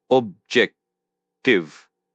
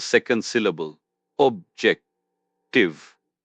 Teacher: Press the stress on the second syllable.